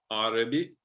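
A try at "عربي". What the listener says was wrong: You don't have to elongate the a. It's just Arabic. A is not a double A. The first A stands for the a.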